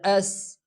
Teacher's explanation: سین کا مخرج سٹ کی آواز کو پیدا کرے، سٹ کی آواز میں سین ادا ہو جاتا ہے